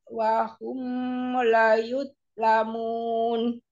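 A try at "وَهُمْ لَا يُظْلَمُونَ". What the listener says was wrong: La yuzlamun. Lanya panjang. Wahum la yuzlamun. Wahum. Bukan walahum.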